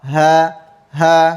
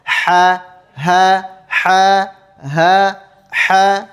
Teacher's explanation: Kalau huruf ha itu tenggorokan bawah. Ha ha ha. Sedangkan huruf ha tenggorokan tengah ya.